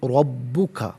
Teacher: रॉ पर ज़बर है, रॉ को पुर करके पढ़ेंगे।